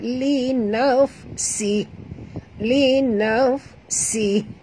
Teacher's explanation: Bunyikan hamas pada huruf fa.